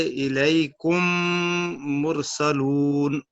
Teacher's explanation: کے بعد دوسری میم آ جائے تو پہلی میم کو دوسری میم میں ملا کر مثل ایک میم مشدد کے غنہ کے ساتھ ادا کی جائے گی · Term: ادغام